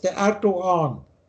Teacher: da spricht man bei vielen türkischen Wörtern dieses G nicht aus